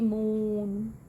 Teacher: ਰਾਉਂਡਡ ਵਾਵਲਸ ਦੇ ਵਿੱਚ ਲਿਪਸ ਗੋਲ ਤੇ ਥੋੜੇ ਅੱਗੇ ਨਿਕਲਦੇ ਨੇ